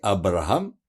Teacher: Le R, c'est un R roulé